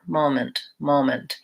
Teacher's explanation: the mo is the stressed syllable and the mint is very short and I would say that people almost leave the vowel out · and the mint is very short and I would say that people almost leave the vowel out entirely it's so short moment moment and so a dictionary might say it's an SWA